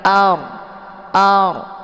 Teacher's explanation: posisinya pangkal lidah naik ke langit